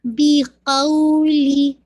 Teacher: بی کی آپ نے پوری جو کسرہ ہے اس کو بالکل باریک کرنا ہے، بے نہیں پڑھنا ، بی قولی نہیں، بے نہیں ہے، بی قولی، قو کو